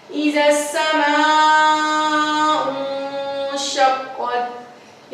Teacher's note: سین کے اوپر شد تھی اسی لیے اس کو ہم نے پیچھے سے ملا کر مضبوطی سے پڑھا